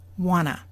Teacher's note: changes number one the blue changed to a and number two the T sound is gone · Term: reduced forms